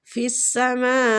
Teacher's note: ماں پہ جو مد ہے یہ مد واجب متصل ہو رہی ہے، اس کو کھینچنے کی مقدار 4 حرکات ہے